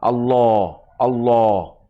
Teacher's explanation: এবার আর আল্লাহর মতো উচ্চারণ হবে না, সে এবার ওই বাংলায় একটি আকার বাদ গিয়ে ফুল মাউথে, মানে মুখ রাউন্ড হয়ে হেভি সাউন্ডে